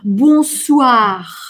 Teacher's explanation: «Бонсуар». Смотрите, «эх» на конце вообще не звучит, оно очень-очень глухое.